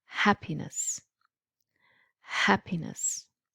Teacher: so the stress is on the first syllable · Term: syllable stress